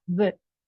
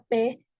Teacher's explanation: La V se siente una ligera vibración, pero si pronunciamos la P no se siente nada